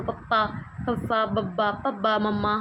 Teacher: ਪੰਜਾਬੀ ਦੀਆਂ ਕੁਝ ਵਿਅੰਜਨ ਧੁਨੀਆਂ ਦਾ ਉਚਾਰਨ ਜਿਹੜਾ ਹੋਂਠਾਂ ਨਾਲ ਹੁੰਦਾ ਹ ਬੁੱਲਾਂ ਨਾਲ ਹੁੰਦਾ ਹ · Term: ਹੋਂਠੀ ਧੁਨੀਆਂ